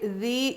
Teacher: ذال یا زیر ذی، ذال ہلکا پڑیں گے، زبان کی نوک سامنے کے دانتوں کے کنارے پر لگے گی، اور یا مدہ ہے، اس کو ہم 1 الف کے برابر کھینچ کے پڑھنا ہے.